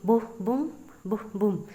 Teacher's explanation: ठीक है, ये एक लाइन ऑफ पोइट्री होती है जो कि लिखी जाती है 5 आयाम्स में, जो कि ग्रुप होता है 2 syllables का, that fall into an unstressed and stressed pattern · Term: आयम्बिक पेंटामीटर